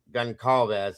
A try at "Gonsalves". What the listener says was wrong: But it's pronounced Gonsalves. The C is an S.